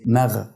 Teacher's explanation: انتقلت من الترقيق بتاع الميم الى التفخيم بتاع الغين